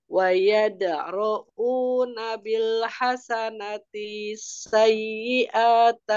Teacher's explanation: Tadi hamzahnya kepanjangan sedikit